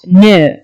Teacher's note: Okay, and then you have got alveolar sound n. Okay, the alveolum is involved actively in that. And then you have a nasal sound.